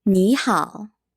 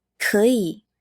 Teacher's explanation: When you see 2 third tones together, the first third tone becomes a second tone. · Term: Third tone and a third tone